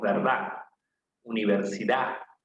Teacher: en el castellano de la costa por ejemplo normalmente omitimos la d